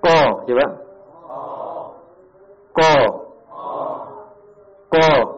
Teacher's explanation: pangkal lidah menyentuh langit-langit yang sejajar dengan pangkal lidah. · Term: aqsal lisan